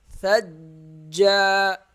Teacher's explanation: جیم سختی سے ادا ہوگا اور ایک الف کے برابر کھینچا جائے گا